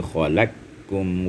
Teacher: khalaqakum diidghamkan dengan idgham kabir qaf dengan kaf mutaqaribain, dekat makhrajnya. Ya, qaf diidghamkan dengan kaf karena memenuhi persyaratan idghamnya, iaitu sebelum qaf khalaqakum, sebelum qaf adalah huruf yang berbaris fat berharkat, ya, khala.